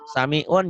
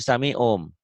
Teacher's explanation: kalau nun mati atau tanwin ketemu huruf iklab, iklab itu hurufnya cuma satu ba, bunyi N-nya berubah menjadi M. Samiun jadi samium.